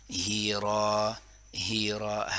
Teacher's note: ہا کی آواز گلے کی آخری حصے سے کلیئرلی ادا کریں